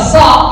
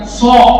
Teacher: Jadi kalau bilang sa, bibir jangan maju, bukan so.